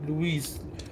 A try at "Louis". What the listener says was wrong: It is Louis. I know it's spelled differently, but it's silent, so it's called Louis.